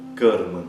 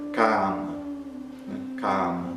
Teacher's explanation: Lembrando que a vogal A curta, ela é fechada como se tivesse um acento circunflexo, né? Então, se for um A longo, então, por exemplo, kama, né?